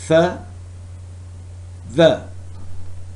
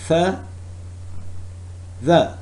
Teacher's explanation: the articulators involved are teeth and tip of tongue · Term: dental